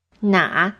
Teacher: na'a is in the third tone and means which